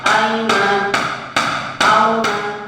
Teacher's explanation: aina, auna itu harus dibaca cepat, ketuknya satu ketukan saja. Tidak boleh kalau kelihatannya aina, auna, aina, auna, tidak boleh.